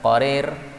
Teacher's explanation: Ini idgham menurut sepakat para ulama ahli qiraat manapun juga. Kemudian qararin ini boleh dibaca dengan imalah